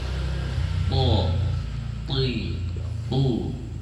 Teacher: huruf th itu letaknya di ujung lidah bertemu dengan pangkal gigi seri atas ini gigi seri kita yang pangkal tapi yang belakang ah nah